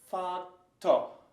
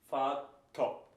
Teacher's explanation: And you hear like an open and quick oh. Oh. So kind of oh.